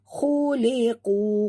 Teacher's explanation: Khuliqu, ku sini mak tabi'i dua harakat dan qaf jaga makhrajnya tebal.